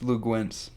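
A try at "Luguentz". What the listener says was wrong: It's not Gwentz. No, it's not Gwentz. No, it's not. It's Lugans Dort. There's no... It's a UE. That doesn't equal W.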